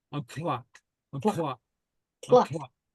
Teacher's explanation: remember it becomes much easier if you place the uh uh your tongue for the T sound not on the pallet but on the front teeth